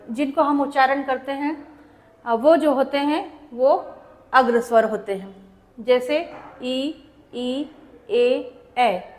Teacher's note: जिनका हम उच्चारण अपने जीभ के अगले भाग से करते हैं उन्हें हम जानते हैं अग्र स्वर के रूप में